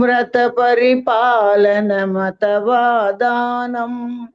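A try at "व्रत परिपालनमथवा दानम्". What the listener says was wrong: எல்லாரும் இந்த அத்தவா மட்டும் இந்த த மட்டும் கொஞ்சம் தடுமாறுறேன். அதை மட்டும் கொஞ்சம் யாராவது முடிஞ்சதுன்னா அது ப்ராக்டிஸ் பண்ணேன்னா நல்லா வந்துடும். அத்தவா அத்தவா சொல்லல, அதுக்கு அத்தவா சொன்னேன்னா நீ பெட்டரா. கங்கா சாகர கமனம் விரத பரிபாலனமதவாதானம் விரத பரிபாலனமதவா மத மத இல்ல மதவாதானம். அது மட்டும்தான் சின்னது.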